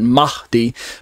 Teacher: where there's kind of a breathy sound on the H part